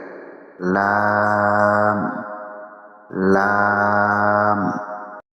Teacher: জিহ্বার আগার কিনারা সামনের উপরের দাঁতের মাড়ির সঙ্গে লাগিয়ে